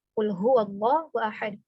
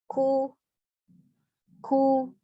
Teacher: Huruf qaf itu betul-betul diucapkannya dengan berat dan tebal.